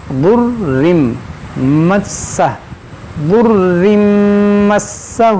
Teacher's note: یہ را مشدد ہے، میم مشدد ہے اور سین مشدد ہے، تو تینوں کو پڑھیں گے دو دو بار۔